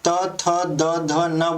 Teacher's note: आप त, थ, द, ध न बोलोगे तो अक्सर देखोगे कि जो आपका जीभ का अगला पार्ट है वो दांत को स्पर्श करते हुए ही बोल पाएगा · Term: दंत्य